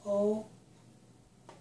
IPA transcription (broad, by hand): oʊ